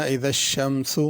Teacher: شمسو کے اوپر پیش ہے تو اسی طرح پڑھنا اذا الشمسو، اس کو زیادہ کھینچنا نہیں ہے، اذا الشمسو کر کے نہیں پڑھنا۔